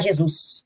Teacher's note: metaplasmo que é um fenômeno metaplasmo transposição ouve uma diast eh o acento tônico né ele se desloca para a sílaba posterior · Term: diástole